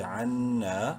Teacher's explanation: نون مشدد ہے غنہ کریں گے اور ایک الف برابر لمبا کریں گے